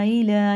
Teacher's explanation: الف زیر لام کھڑا زبر لا الا یا چھوڑ دیں گے. یہ مد منفصل ہے. اس کے بعد الف آنا 3 الف کے برابر کھینچ کے پڑھیں گے